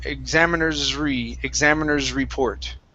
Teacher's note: So connect that S to the R.